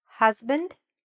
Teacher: So, here the stress is in the first part.